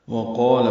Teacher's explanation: وقال میں واو ہونٹوں کی نا تمام گلائی سے ادا ہوگی، قاف پر ہے، اس کا الف مد بھی پر ہے، دو حرکات لمبا ہے، لام باریک ہے